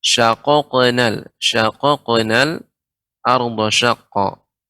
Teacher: Di sini ada Perhatikan pada ayat yang ke-36 di sini ada qaf yang qalqalah syaqaqnal dan qaf termasuk huruf isti'la sehingga pengucapannya dibaca dengan tebal ya isti'la naiknya suara ke langit-langit